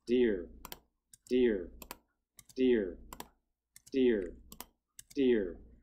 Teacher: left is the one that's gonna sound the most voiced because the voiced sound should have a lower F zero at the start · However, if I take the first step of VOT, but all 5 steps of the F0 continuum, and put those together recoverably, now we can hear that all of these will sound like D, but with a different pitch